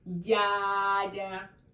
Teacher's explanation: First vowel, right, is stressed. Дядя, not second.